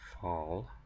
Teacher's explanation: it's more of an open o it's the word fall